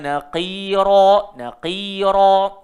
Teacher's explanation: qaf dengan ra kena tebal